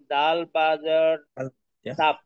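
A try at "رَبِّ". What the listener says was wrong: এটা র হবে, র। ডাল হইলে তো সোজা ভাবে বাঁকা।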